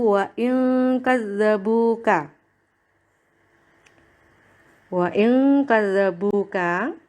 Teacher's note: Ada huruf yang berharokat domah bertemu dengan wawu sukun. Maka dibaca panjang 2 harokat, disebut dengan mat tobi'i.